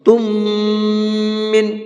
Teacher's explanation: تم من، یہاں پر میم ساکن کے بعد میں میم ہے، اور میم ساکن کے بعد میں میم آتا ہے تو پہلے والے میم کو دوسرے والے میم کے اندر مکس کر دیتے ہیں، ملا دیتے ہیں، اور ساتھ ساتھ غنہ کر کے پڑھتے ہیں